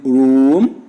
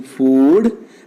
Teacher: The happy vowel number 10 is oo, as in room, as in food. The back of the tongue is raised to the close position. The lips are rounded. The tongue is tense. It is a long vowel, but the length is reduced before voiceless consonants.